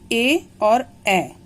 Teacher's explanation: इनका उच्चारण स्थान है कंठ और तालु। कंठ तालु उच्चारण स्थान है और इसका नाम है कंठ तालव्य।